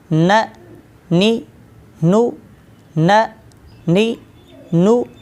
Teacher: ज़ुबान का किनारा और सामने वाले दांत यानी कि सनाया, रबाई और अनयाब के मसूड़े, यहाँ से नून अदा होता है।